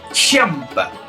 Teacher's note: En vez de hacer una S, hacer como una J, echando mucho aire. Es como hacer el ruido de un bicho que está asustado por algo. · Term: KJ